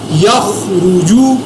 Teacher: یا زبر خوا یخ، را پیش رو، یخرو، جیم پیش جو، یخرجو۔ خوا اور را کو میں نے پر ادا کیا